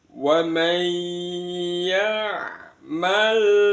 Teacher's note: Yang pertama di wa man, sama bacaan idgham bi gunnah, dimasukkan dengan mendengung. Bunyi nunnya langsung masuk ke ya.